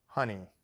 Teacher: the H is pronounced like the Spanish jota. Say the word below and use the breathy sound. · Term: H sound